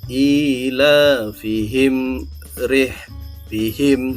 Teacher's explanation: Cara membacanya ialah dibaca dengan jelas tanpa dengung. Jadi biasa saja. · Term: izhar syafawi